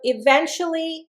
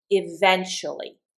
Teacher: And I want you to notice here I've got 1, two, three, four syllables and it's an adverb. I'm accenting the second syllable eventually